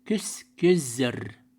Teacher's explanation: глухой звук попадает между двумя звонкими. В данном случае гласный, да, поэтому глухой звук озвончается